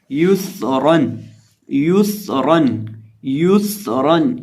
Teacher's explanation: सीन के अंदर सिटी की आवाज़ पैदा करेंगे और रॉ को पुर करेंगे